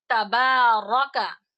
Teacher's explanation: را پر زبر یعنی فتحہ ہو تو را کو موٹا پڑھا جائے گا